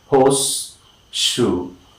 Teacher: So the tongue has to quickly move from the alveolar position to, of course, the palato-alveolar position. And that is, of course, two different locations in the palate or, of course, the roof of the mouth.